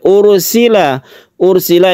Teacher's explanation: ini ada sukun ro yang sebelumnya ada dhammah, maka dipanjangkan, maka ditebalkan yang kita sebut dengan ro tafkhim atau mufakhom, kemudian diakhiri dengan mad alid lisukun.